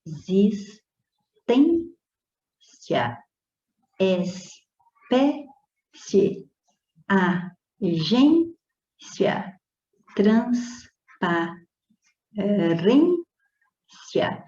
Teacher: Observa que a sílaba tônica está sendo sempre a penúltima. E se a penúltima sílaba é tônica, nós chamamos essas palavras de paroxítonas.